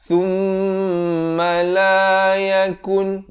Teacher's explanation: wajib dengung kadar panjang 2 harakat